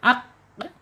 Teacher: Ada di pangkal lidah yaitu pangkal lidahnya terangkat dan menyentuh anak-anak lidah yang ada di atasnya ya.